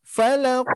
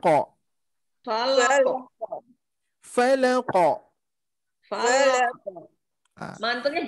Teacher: Huruf qaf itu adalah huruf qalqalah yang mana harus kita pantulkan.